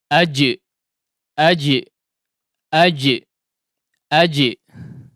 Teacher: huruf Jim ketika diucapkan kedua Sisi mahroja harus ditempelkan dengan kuat meskipun di benturkan